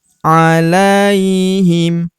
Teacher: tahzan alaihim. Huruf la kita ayun sekali karena terdapat ya sukun di depannya yang ini. Wala tahzan alaihim wala tahzan alaihim wala tahzan alaihim.